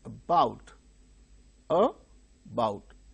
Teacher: the initial syllable is very weak, about. So, because it is not stressed, it becomes weak